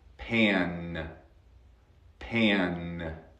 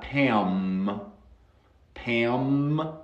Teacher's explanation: Y piense muy bien, no cierro los labios.